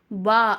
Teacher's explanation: ரெண்டு உதட்டையும் இணைக்கும் போது நமக்கு வா அப்படிங்கிற எழுத்து வருது